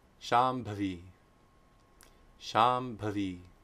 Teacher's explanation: if Anuswara precedes a labial, it's very simple. Labial nasal sound is ma.